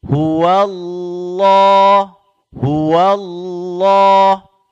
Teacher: dia huruf lam sambil kita mengangkat lidah belakang ditebalkan